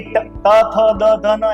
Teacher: પછી ત થ દ ધ ન એને દંત્ય કહેવાય, દાંત દંત્ય. કેમ? કારણ કે જીભને દાંતને અડાડવી